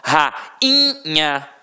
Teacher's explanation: Agora, rainha, o I foi o quê? Nasalizado. Então não teve som de I de verdade.